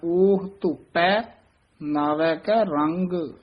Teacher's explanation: ਧੋਪੈ ਭੈ ਨਹੀਂ ਬੋਲਣਾ ਧੋਪੈ ਪਪੇ ਨਾਲ ਉਚਾਰਨ ਕਰਨਾ